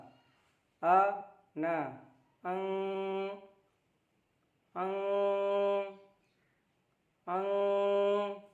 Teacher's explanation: नाक में आवाज़ ले जाकर 1 सेकंड तक आवाज़ को ठहराना है और वहाँ से नाक का बांसा इसका उच्चारण स्थान है।